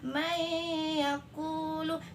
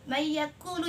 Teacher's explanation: Jadi harus ada gunnahnya sekitar 2 harokat.